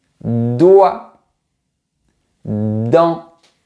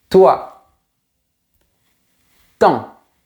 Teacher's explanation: Pour les deux sons, ma langue touche mes dents. Mais pour de ça vibre et pour t ça ne vibre pas.